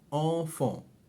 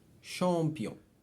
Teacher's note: Now, these nasal letter combinations all give us the same sound. So AM, AN, EN, EM, ON, OM, they are all pronounced en.